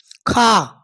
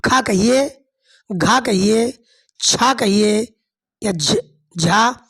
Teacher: इसमें विसर्ग की तरह हा की ध्वनि सुनाई पड़ती है। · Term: महाप्राण